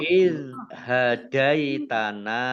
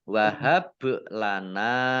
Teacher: bak sukun, bacaan kolkolah, dibaca memantul, ditampakkan pantulannya.